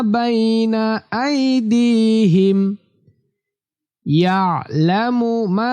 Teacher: আইনটা কণ্ঠনালী বা হলকের মাঝখান থেকে উচ্চারিত হবে